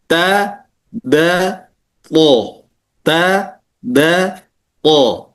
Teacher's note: ta da to, ta da to itu makhrajnya kan ujung lidah menyentuh tempat tumbuhnya gigi seri